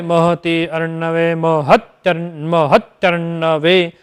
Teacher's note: इस प्रकार ई में जो संयोग होता है, जब ई और अ जब मिलते हैं तो य होता है, और इसके मिल जाने से नुब्ज या फिर तिर्यक स्वरित स्वर होता है, उसको क्षिप्र स्वर कहते हैं। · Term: इकार का यकार